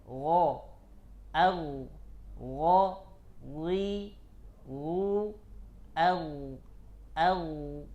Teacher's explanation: Al-ghain makhrajuha min adnal halq, ya, dari tenggorokan bagian atas, paling atasnya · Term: huruf ghain